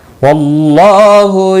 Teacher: واللہ اللہ کا لام موٹا پڑھا جائے گا زبر کی وجہ سے، اس کے اوپر کھڑی زبر بھی ہے، ایک الف کے برابر کھینچ کر پڑھیں گے۔